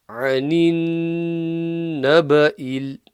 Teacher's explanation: And then the noon mushaddada ghunna, 2 second nasal sound.